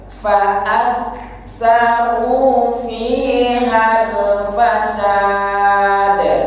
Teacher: ini ada hamz, keluarkan anginnya